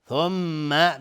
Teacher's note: ثم میم تشدید دار دو حرکت غنه میدیم